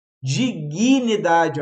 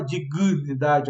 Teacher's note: a gente acaba botando um I a mais depois do G ali, em dignidade